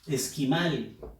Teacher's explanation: Fuerza de voz en la sílaba mal, que es la última.